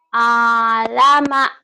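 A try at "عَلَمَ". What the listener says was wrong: Ain. Alama. Hutang ain ya. Kayak orang nelen. Kayak orang lagi keselak. Alama. Alama.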